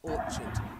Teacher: so it's a ch sound, not a k sound